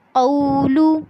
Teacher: قو میں جب آپ قاف کو واو سے ملائیں گے تو آپ نے ہونٹوں کو گول کرنا ہے